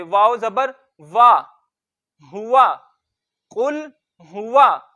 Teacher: उसके बाद हमने देखा वाव के ऊपर जबर है तो जबर मुंह खोल के अदा करेंगे और जबर को भी लंबा करके नहीं पढ़ते।